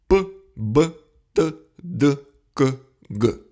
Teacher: Для них мы полностью перекрываем ток воздуха из легких, потому звучность и падает. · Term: взрывные согласные